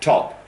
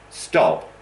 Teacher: Top, stop, saying them quickly after one another, you should feel for top, explosion, for stop, very little air